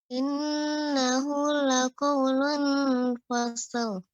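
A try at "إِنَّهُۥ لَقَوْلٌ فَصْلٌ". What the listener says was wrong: Ya, masih terdengar lidah ini tidak boleh lengket. Lidah kita tidak boleh lengket ke langit-langit, tapi tetap ya dia di tengah-tengah. Ketika kita mau ketika membaca lung itu nggak langsung nggak ditempelkan.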